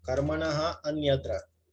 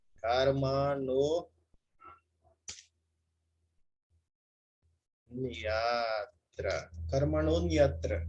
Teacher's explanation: A regra diz, se quando um A curto precede a visarga, tá aqui, ó, marquei o A curto precedendo a visarga, e outro A curto segue a visarga, tá aqui, já marquei ele. O A curto que precede a visarga e o A curto que segue a visarga, tudo isso transforma em O avagraha.